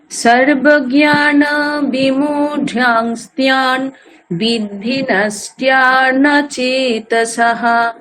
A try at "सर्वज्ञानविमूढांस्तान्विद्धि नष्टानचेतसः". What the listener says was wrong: ওখানে তিয়ান তারপর নষ্টিয়ান এরকম জফলা উচ্চারণ হচ্ছে আপনার, সেটা করা চলবে না। হ্যাঁ, শুদ্ধ আকার তান নষ্টান, ঠিক আছে? আবার বলছি আমি, সর্বজ্ঞান বিমূঢ়াংস্তান বিদ্ধি নষ্টান চেতসঃ।